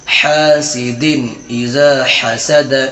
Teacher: کیونکہ تنوین کے بعد حرف حلقی میں سے ح آ رہا ہے، اس لیے نون کی آواز کو ظاہر کر کے بلا غنہ کے جلد پڑھیں گے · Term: اظہار